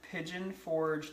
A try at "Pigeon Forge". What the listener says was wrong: A Pigeon Forge? You said Ford.